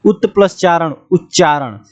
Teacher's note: यदि त के बाद यदि च छ हो तो त का च हो जाता है